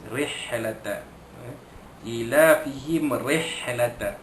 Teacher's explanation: jadi ra bari bawah tu baca tarqiq, ya, baca nipis